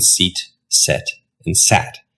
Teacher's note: your tongue starts up high, e goes to the middle of your mouth, and then goes down to a. So your tongue can go up and down.